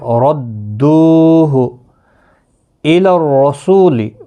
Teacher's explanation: ردوہ الی الرسول، را پر پڑھا جائے گا زبر کی وجہ سے، سو واو مدہ ہے، 1 الف کی مقدار کے برابر کھینچ کر پڑھیں گے